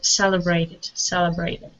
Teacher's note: stress at the very beginning of the word